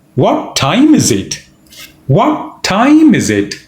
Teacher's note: stress on time also stress on what